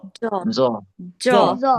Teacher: জিহ্বার আগা থেকে মোটাভাবে আদায় হবে